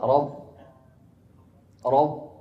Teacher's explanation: Makhraj ba dari kedua bibir ya.